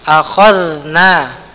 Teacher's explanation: huruf dha dia sukun jadi dia mengalir ya